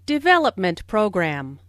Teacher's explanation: Since these 2 words make a compound noun, the main stress falls on development.